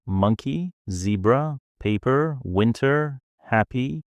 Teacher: that first syllable is stressed it's pronounced longer louder and with more energy